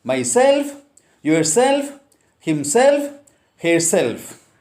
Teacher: Most of the words ending in self, e, ia, et and ik take stress on the last syllable